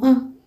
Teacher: Irabu ya kati hutamkwa sehemu ya kati ya ulimi.